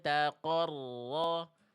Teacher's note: Dengungannya nggak betul-betul eng, durasi kadar 2 harokatnya pas, ditahan dulu. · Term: ikhfa hakiki